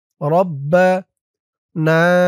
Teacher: না এখানে ৩ আলিফ টান, মধ্যে মুনফাসিল